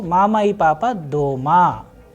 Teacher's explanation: Here, if you pay attention, when I am pronouncing, when I am using this particular sentence with E, the E and the next word doesn't have any pause